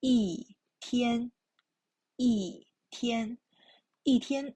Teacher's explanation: 一 pronunciation changed to the fourth tone